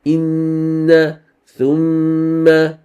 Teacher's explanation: you read it with two harakat ghunna